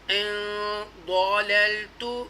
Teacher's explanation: ان نون ساکنہ کے بعد حروف اخفا ضاد آ رہا ہے، اس لیے ہم نسلائزیشن ناک میں آواز لے کر پڑھ رہے ہیں